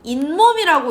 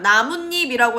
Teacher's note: 발음할 때 갑자기 니은이나 니은니은 소리가 덧나는 거야.